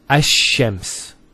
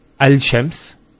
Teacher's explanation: The actual points of articulation of the lam and the sheen are very close to each other. And because they're very close, what happens is this lam is not pronounced.